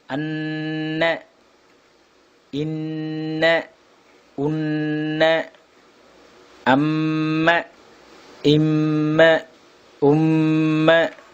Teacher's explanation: ஒரு அலிஃப் அளவு சப்தத்தை மூக்கில் நிறுத்தி ஓதுவதற்கு ஒன்னா என்று சொல்லப்படும்.